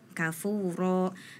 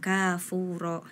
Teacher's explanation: di ayat kelima jadi ayat ketiga sama kelima sama-sama kafuro tapi yang ketiga itu huruf kafnya pendek kafuro kemudian di ayat kelima baru huruf kafnya panjang kafuro